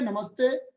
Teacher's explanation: विसर्ग दंत्य स में बदल जाता है